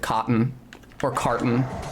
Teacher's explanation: the T is being replaced by a glottal stop